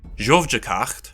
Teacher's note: in the past stem the voiced affricate causes a /v/ to appear in the indirect object prefix